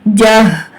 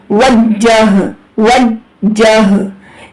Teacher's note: ہا اقصا حلق سے جب آپ یہ اس ہا کی ادائیگی کریں گے تو آپ کو سینے میں وائبریشن فیل ہوگی۔ سختی اور جماؤ وج، جیم ہا زبر جہ، وجہ، وجہ، تا پیش تو، وجہ تو، وجہ تو، حمزہ زبر آ، تا پیش تو، آ تو، ہا۔